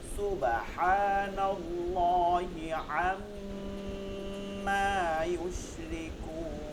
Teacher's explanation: আম্মা মিমে তাসদিদ আছে ওয়াজিব গুন্না · আল্লাহ শব্দটা মোটা হবে এই যে নুনে জবর আছে এর জন্য সুবহানাল্লাহি সুব এটা কলকলা হবে